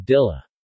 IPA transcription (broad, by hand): dila